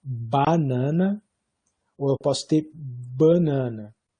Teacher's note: Então seria uma nasalização antecipatória